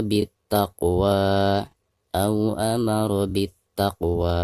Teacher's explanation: Alif lam tidak dianggap, dihukumi alif lam syamsiah ya. Jadi dari bacaan bi langsung ke ta.